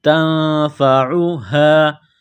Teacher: نون کے ساتھ پلس کرنا ہے، تا کو باریک کرنا ہے، نون ساکن کے بعد فا ہے، حروف اخفا ہے تو نون ساکن پر غنہ کریں گے ، تنفعها، یہ گول ہا ہے چشمہ والی، صرف منہ سے